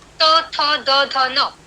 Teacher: उदाहरणार्थ त, थ, द, ध, न, ये जो वर्ण है उनका उच्चार करते समय आप जिह्वा को दांतों की ओर स्पर्श करते हैं, तो जिह्वा और दांत के बीच फ्रिक्शन निर्माण होके ही वर्णों की उत्पत्ति होती है।